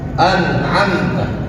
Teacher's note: mim sukun ketemu dengan ta dibacanya jelas dan tidak ditahan ingat tidak ditahan jangan sampai baca anamta ditahan itu salah keliru. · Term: izhar syafawi